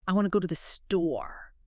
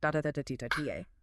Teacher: The rhythm is defined by go and store. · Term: stress